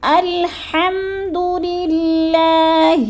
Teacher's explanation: حلق کے درمیانی حصے سے ہم نے اس کو ادا کرنا ہے، باریک کر کے پڑھنا ہے،